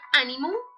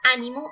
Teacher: El ejemplo, aquí está animum en latín y tenemos ánimo en castellano. Entonces encontramos una inflexión de U a O y una apócope de M final